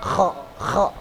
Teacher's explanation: Yad khulu, khu itu kho. Seperti kita berdahak, kho ya. Nah, itu makhornya di situ, tenggorokan. Jadi nggak boleh yad hulu.